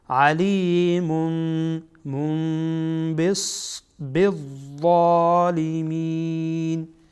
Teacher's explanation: بعد از تنوین با آمده، با حرف اقلابه، این تنوین را به میم تبدیل میکنیم.